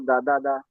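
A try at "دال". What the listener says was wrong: দা নামে কোন হরফ আছে? নাকি দাল? দাল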